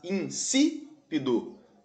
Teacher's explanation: A antepenúltima sílaba é a mais forte. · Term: proparoxítona